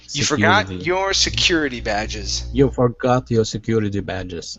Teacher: with that word security, give me a flap T there